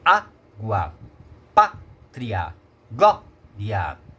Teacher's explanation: Quando vai falar a sílaba átona fraca, o I e o U, ele é quase que inaudível. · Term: ditongo crescente